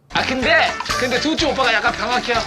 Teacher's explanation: His last syllable there is hyo, which is a dialect version of heyo. So heyo compresses into hyo, like that.